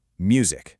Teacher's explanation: Take the word music. The beat is on mu. Music. See, that's the stress syllable.